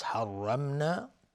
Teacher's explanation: را اینجا حکمش تفخیم هست چون فتحه داره. میم ساکن بعدش نون، اظهار شفوی